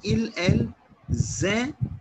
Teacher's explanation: I will not pronounce N and T at the end.